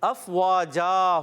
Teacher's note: اب یہاں دو زبر کی تنوین دیکھ رہے ہیں آپ. اب یہ دو زبر کی تنوین وقف کی صورت میں کیا ہوگی؟ ایک الف سے بدل جائے گی. ٹھیک ہے, افواجا ہو جائے گی.